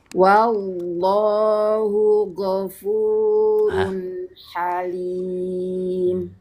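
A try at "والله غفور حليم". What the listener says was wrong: Jangan go, ngambilnya jangan dari go, tapi ngambilnya jadi huruf kho. Jadi gini. Tuh gitu tuh. Jadi huruf kho hilangkan saja ngoroknya. Coba coba lagi nah wallahu ghafurun halim.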